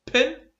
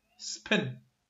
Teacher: صوت ال p في المرة الأولى كان aspirated، أما صوت ال p في المرة الثانية لم يكن aspirated